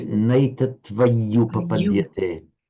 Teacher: Now, pronounce that double y quite strongly.